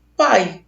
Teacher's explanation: E esse I que está do lado é uma semivogal, que tem menos intensidade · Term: ditongo decrescente